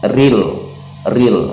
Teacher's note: Ra-nya dibaca tarkik ya, karena ketika sudah kita jelaskan di awal tadi, ketika ra ini berharokat kasroh, hukumnya tarkik, hukumnya dibaca tipis